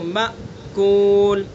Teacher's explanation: फजअलहुम कअस्फ़िम मअकूल। देखिए मअकूल हमज़ा है, इसके झटके के साथ पढ़ेंगे इसको, मअकूल। सिफत, इसके अंदर सिफत पाई जाएगी और झटके के साथ, यानी जहर इसके अंदर पाई जाएगी, यानी इसको अदा करते वक्त आवाज़ ऊंचाई की तरफ जाएगी, मअकूल।